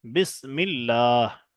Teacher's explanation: এখানে কোনো ভাই বিসমিল্লাহ বলবেন না, কারণ আল্লাহ শব্দের ডান দিকে জের এসেছে, এখানে আল্লাহর লামকে বারিক অর্থাৎ লা পড়তে হবে।